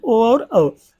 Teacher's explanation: तो कंठ ओष्ठ में दो ही आते हैं, ओ और औ।